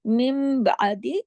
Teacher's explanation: नून की साकिन, नून की आवाज बा में बदल गई, इकलाब का कायदा भी लग गया।